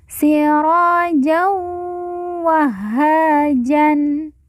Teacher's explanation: ha yang bertasjid langsung ditekan ditahan dua harakat